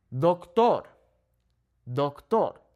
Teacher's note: the natural emphasis on this word falls on the second to last vowel